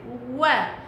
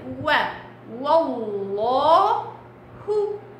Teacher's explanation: اتكائك في الواو على شفايفك، وا طرف الشفايف